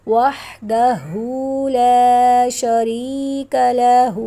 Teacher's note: یہاں پر لا پہ الف مدہ ہے، ایک الف کے برابر لمبا کریں گے